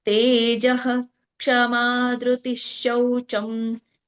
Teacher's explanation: ಹಿಂದಿನ ಒಂದು ವಿಸರ್ಗ ಪೂರ್ಣವಾಗಿ ಉಚ್ಚರಿಸಬೇಕು